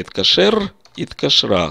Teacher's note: Давайте по аналогии с этим я скажу «иткашру», это они позвонили. Здесь мы слышим «иткашер», «иткашра», сокращается гласный звук.